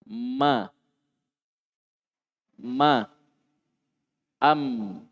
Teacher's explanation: Mim adalah salah satu huruf yang keluar dari kedua bibir ketika tertutup.